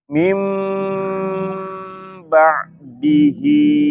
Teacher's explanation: kalau nun sakinah atau tanwin bertemu dengan huruf ba, maka nunnya berubah menjadi huruf mim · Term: iqlab